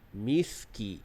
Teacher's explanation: Kemudian pada miskinan, miski, di situ kita sebut sin dengan nipis dan ki juga dengan nipis